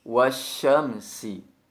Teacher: Huruf shin dengan mengangkat tengah lidah naik ke atas langit-langit, sedangkan huruf sin dengan menempelkan ujung lidah pada bagian dinding bagian bawah atau dinding pada bagian gigi seri bawah. · Ucapkan huruf shin bertasdid dengan menyebarkan angin di dalam mulut, sehingga tampak jelas bunyi yang sesuai dengan sifat tapasinya.